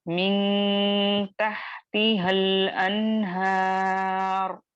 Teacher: इस अलीफे मद्दा को ड्रॉप कर देंगे और हा पर जो हरकत है यानी फतहा है या जबर है, इसको लाम साकिना से डायरेक्ट मिलाकर पढ़ेंगे